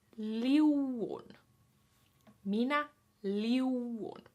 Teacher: That's why there's that funny little apostrophe mark in the word, because it just means the U's are separated into 2 separate vowels, because it's IU in the first vowel, then it's UN in the second one